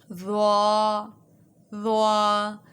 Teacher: جب زبان کی نوک ثنایا علیہ کے سرے سے لگے گی تو ضا ادا ہوتی ہے۔ · ضا جو ہے اس کو ہم نے موٹا پڑھنا ہے کیونکہ یہ حروف مستعلیہ میں سے ہے۔